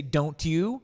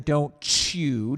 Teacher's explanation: make sure that you say don't you rather than don't chew don't let that ch come